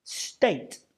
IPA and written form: steɪt (state)